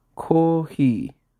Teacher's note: Just watch out for the second syllable, which changes to he in Japanese.